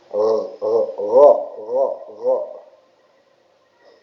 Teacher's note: huruf ghain itu datang dari tenggorokan. Tenggorokan paling atas ya